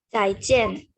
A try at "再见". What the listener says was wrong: Oh, cuma nadanya ya, 再见。 再见, nada 4-4.